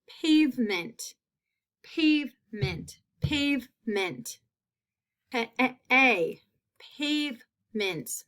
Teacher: That long A sound in that first syllable.